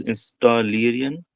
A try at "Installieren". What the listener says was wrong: Yeah, you should read it properly. Installieren. You see E-R-N.